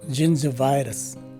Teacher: The phonetic spelling would tell us of the presence of not one but two stress marks in this word. The first one is a secondary stress in the beginning of the word and a primary stress in the third syllable. Both the two letter G's take a J sound, as in January, and the first letter I is a regular I.